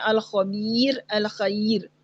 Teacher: क्यों बारीक पढ़ना है, क्योंकि पीछे याए साकिना आ रही है, और ये याए साकिना दो जेरों के बराबर होती है, इस वजह से हमने इस रॉ को बारीक ही पढ़ना है